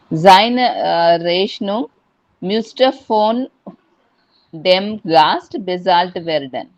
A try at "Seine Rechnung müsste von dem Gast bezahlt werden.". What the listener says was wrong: Super. Well done.